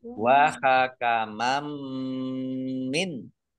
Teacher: Fathah tanwin bertemu dengan huruf mim, itu huruf biguna, masuk dengan mendengung, yaitu mendengung mim, ditandai mimnya ada tasdidnya.